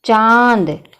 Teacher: जो हमारी हवा होती है मुंह की, वो हमारे जो है गले और नाक में से निकलती है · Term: चंद्र बिंदु